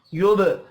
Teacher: با ساکن پر قلقلہ کریں گے